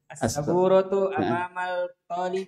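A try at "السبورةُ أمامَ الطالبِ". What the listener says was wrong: Amamat, bukan amamal. Kalau amamal berarti nanti dia masuknya al-qamariyah. Ini masuknya Asyamsiyah. Berarti amamat, alif lamnya enggak terbaca. Amamat talibi.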